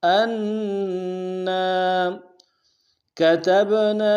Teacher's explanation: تا کو با کے سامنے لائیں گے، با حروف قلقلہ میں سے قلقلہ کریں گے، نون کے ساتھ الف مدہ ایک اعتدال میں کھینچیں گے.